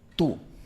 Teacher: Esta es una posición bastante extrema porque la lengua está muy muy atrás y muy arriba. En inglés no hay una posición tan extrema. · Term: la u española